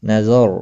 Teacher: را ساکن سے پہلے زبر ہے، اس لیے را ساکن پر پڑھا جائے گا